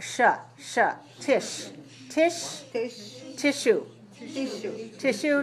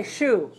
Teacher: So notice we don't say su, we say shu.